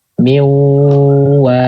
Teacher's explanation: suara dari rongga hidung itu punyanya si nun, bukan si waw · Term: idgham nakis